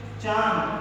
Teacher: इसका उच्चारण करते समय हवा नाक तथा मुख दोनों के दबाव के साथ में बाहर निकलती है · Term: अनुनासिका